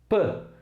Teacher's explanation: é um som que você fecha a boca os lábio superior e o inferior e você não sonoriza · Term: consoante oclusiva bilabial surda